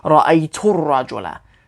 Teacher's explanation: the u sound runs through to the l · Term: hamzatul wasl